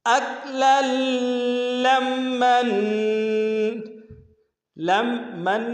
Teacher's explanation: لمن میں بھی ادغام کر رہے ہیں لیکن غنہ نہیں کر رہے ہیں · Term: ادغام بلا غنہ